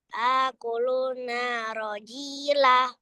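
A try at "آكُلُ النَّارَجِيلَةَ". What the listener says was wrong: Ada tasdidnya. Akulun narojila.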